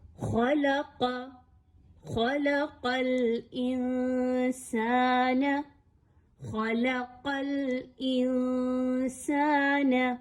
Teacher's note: اس وجہ سے آپ نے لام کو موٹا نہیں پڑھنا کہ اس کے آس پاس موٹے حروف ہیں، بلکہ آپ نے خا کو موٹا پڑھنا ہے، پھر لام کی جب باری آئے تو لام کو باریک رکھیے اور پھر قاف کو پر کر کے پڑھیے، یعنی موٹا کر کے پڑھیے۔